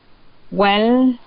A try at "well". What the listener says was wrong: So if you're going to feel your tongue is between your teeth, well, okay, you can bite it a little bit so that you can produce the L sound, not the R sound. Okay, you're not going to curl your tongue, but to bite it a little bit soft so that you can produce the L sound. Well.